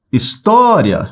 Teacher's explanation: História, chamei, se prolongou, na penúltima sílaba, paroxítona. Terminada em duas vogais que ficam juntas.